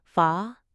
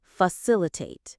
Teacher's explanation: The stress is on the second part.